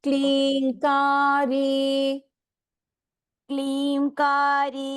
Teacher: ಕ್ಲೀಮ್ ಕಾ ದೀರ್ಘ ರೀ ಇಸ್ ಆಲ್ಸೋ ದೀರ್ಘ